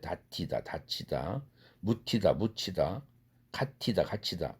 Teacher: 드 플러스 흐 사운드는 결합되면은 거센 소리로 나죠. 그래서 격음으로 나요. 드 플러스는 트가 되고, 그럼 트 플러스 해다 시다 할 때 이 모음이 결합되니까 트 플러스 이가 취가 된 것이죠.